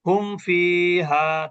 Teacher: হুম ফিহা, দেখেন এখানে আমরা কিন্তু দেরি করলাম না, হুম ফিহা, তার মানে এখানে গুণনা হবে না, কারণ মিম সাকিনের পরে ফা আসছে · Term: ইজহার